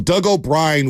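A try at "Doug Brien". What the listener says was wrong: Doug Bryan. You don't have to add an O to every Irish name.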